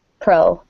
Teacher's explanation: we would almost put a little bit of a W sound